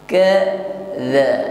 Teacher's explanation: Jadi ka ini sifatnya syiddah ya. Tapi selain syiddah, kaf juga memiliki sifat hamas. Jadi sedikit agak lemah dari huruf qaf.